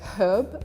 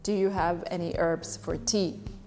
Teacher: So there is no H at the beginning of this word.